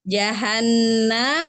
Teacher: Jahanna ini ada nun musyadadah, tingkatan gunahnya akmal matakun atau paling sempurna